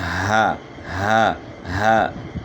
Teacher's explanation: ہا جو ہے اس کی ادائیگی حلق کے نچلے حصے سے ہے۔